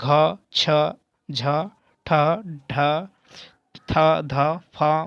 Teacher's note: जिन व्यंजनों के उच्चारण में अधिक वायु लगती है उसे महाप्राण कहते हैं प्रत्येक व्यंजन वर्ग के द्वितीय और चतुर्थ व्यंजन महाप्राण होते हैं · महाप्राण व्यंजन जो है कौन नहीं है, जिन व्यंजनों के उच्चारण में अधिक वायु लगती है। ठीक है, जिन व्यंजनों के उच्चारण में अधिक वायु लगती है उसे महाप्राण कहते हैं।